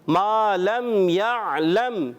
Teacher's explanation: عین کو یہاں پر ساکن ادا کریں گے، عین کی آواز کلیئر رہے